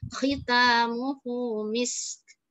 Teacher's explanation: Sinnya kita panjangkan, sofirnya kita kasih rokhwahnya, kita kasih hamesnya, misk. Kemudian kafnya tinggal hamesnya doang.